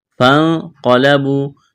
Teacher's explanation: نون ساکن کے بعد قاف ہے، یہاں پر اخفا کریں گے